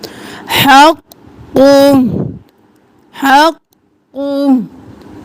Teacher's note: हक़ और कु, क़ाफ दो बार और मोटा भी पढ़ना है